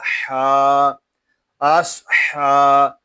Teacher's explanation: ہا کھڑا زبر ہا آس ہا، ہا حلق کے درمیان والے حصے سے ادا ہوگا، اس کو ہا نہیں پڑھیں گے.